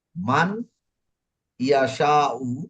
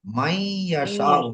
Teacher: নুন ইয়ার সাথে ঈদগাম হয়ে যাবে। আর ঈদগাম হলে বলা হচ্ছে এখানে গুণনা করতে হবে।